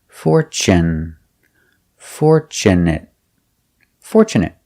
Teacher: Also with this word we have tu. Tu in the middle of the word is pronounced ch and not fortu but fort.